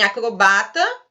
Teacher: Em acrobata, a sua sílaba tônica seria o ba, e aí você vai classificar a palavra como uma paroxítona.